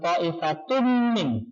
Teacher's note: Idgham artinya dimasukkan, tanwinnya yang dimasukkan dalam huruf min, bihunna dengan mendengung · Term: idgham bihunna